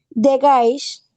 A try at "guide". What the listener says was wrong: No, es que al final es con D. The guide